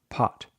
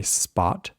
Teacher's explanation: If you put your hand in front of your mouth, when you say pot, you'll notice air coming out, pot. But if you say spot, that amount of air is reduced a lot. Of course, you're still breathing, but it's not nearly as aspirated.